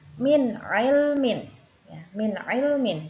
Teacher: terdapat huruf nun sukun bertemu dengan huruf Ain maka cara membacanya Idhar yang harus jelas